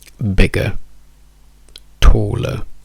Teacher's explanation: tutte queste ER diventano semplicemente una schwa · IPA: /ə/